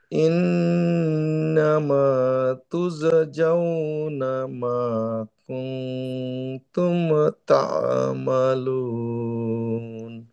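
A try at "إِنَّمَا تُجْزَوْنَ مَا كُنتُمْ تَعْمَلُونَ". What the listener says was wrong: হ্যাঁ, পড়া ভালো হয়েছে, সুন্দর, শুধু যা এবং জায়ের মধ্যে পাশাপাশি দুইটা তো একই উল্টা পাল্টা হয়ে গেছে, মানে জায়ের জায়গায় যা হয়েছে, জায়ের জায়গায় যা হয়েছে, বাট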